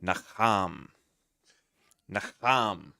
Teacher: It says the emphasis is on the second syllable.